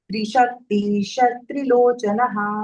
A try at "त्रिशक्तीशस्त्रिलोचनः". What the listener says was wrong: शस स आहे, स.